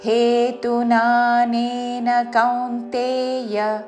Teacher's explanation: కౌ కా ఔత్వంతో దాని మీద ఆఘాత కౌంతేయ చివరిలో య హ్రస్వము